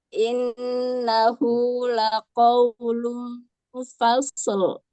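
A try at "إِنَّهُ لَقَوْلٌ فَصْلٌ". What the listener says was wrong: nah, masih ya, Bu. Fasl ada selnya ya. Kelihatan sekali ya. Fasl. Fasl. Bukan fasl. beda ya, Bu ya? Suaranya beda kan?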